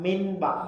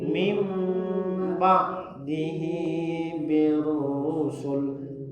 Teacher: Bunyi nun sukun ketika bertemu dengan ba berbunyi mim. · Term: iklab